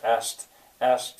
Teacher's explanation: in my dialect many people would say asked they would not bother to try to get that K in there